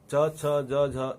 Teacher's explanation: च ध्वनि में जीभ और तालू का स्पर्श भी है और हवा का घर्षण भी है, इसलिए च छ ज झ इन ध्वनियों को स्पर्श संघर्षी कहा गया है।